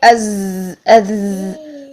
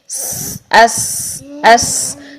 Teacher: سین کے لیے اور زا کے لیے زبان کی جڑ نیچے رہتی ہے۔ یہ باریک حروف ہیں۔